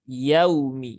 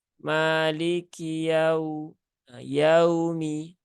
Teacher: Nah, ini sifatnya lin, ya, sehingga harus dibaca dengan ringan, ya. Harus dibaca dengan lunak. Jangan disentak, ya. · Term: sifat lin